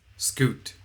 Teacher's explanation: Um these consonant sounds are aperiodic waves, so they are noise. S is a sibilant sound, a sustained noise, whereas the K and T are called plosives. The K and T are of course short sounds with a burst of air at the beginning.